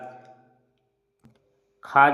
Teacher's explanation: ख जो है वह महाप्राण है और कंठ से बोला जाता है